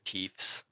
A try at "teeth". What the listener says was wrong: You just said teeth. It sounds like you're putting an F there. Teeth.